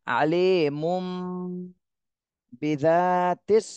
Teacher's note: তানভীনের পরে ইকলাবের হরফ বা এজন্য মিম কে ধরতে হবে গুন্না সহ